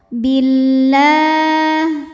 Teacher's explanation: lam syamsiyah karena alif lam menghadapi huruf Syamsiyah yaitu lam maka alif lam tidak kita baca atau disebut dengan Idgham Syamsi